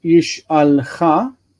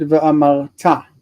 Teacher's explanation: Both of these are stressed on the end.